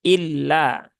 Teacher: illa ini tipis jangan lama-lama dan Cukup dua harakat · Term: lam bertasdid